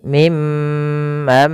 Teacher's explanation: ditahan dalam lafal mimnya menahan juga dengan bunyi mnya sepanjang dua harakat